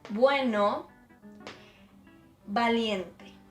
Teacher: So it's B and V, but in Spanish it's the same sound.